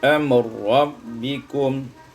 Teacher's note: idghamur ra firra, diidghamkan ra pada ra menjadi amr rabbikum.